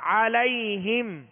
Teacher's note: عین کو درمیانی حلق سے ادا کرنا ہے